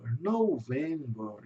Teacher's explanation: o November em inglês vai ter um som de o U entre o O e o V. Aqui vai ter porque é uma vogal longa.